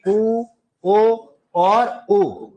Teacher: उ ओ और उ ये वृत्ताकार वृत्ताकार है। होठ गोल हो जाते हैं।